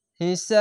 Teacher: সাকিন দিলে কলকলা হয়ে যায়, কলকলা হবে কেন, জের বাদ দিয়ে সাকিন দিলে কলকলা হয়ে যাবে। এবং এখানে প্রথমে তিন আলিফ টেনে পড়বেন, তারপরে কলকলা হবে